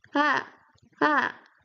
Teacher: fourth tone, you go from up to low